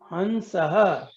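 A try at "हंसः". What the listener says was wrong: Hamsaha, the better way of pronouncing it. Not. It is not Nakara. It's Makara. Hamsaha.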